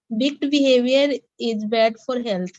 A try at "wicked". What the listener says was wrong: But again, not wick. It is wicked. Wicked.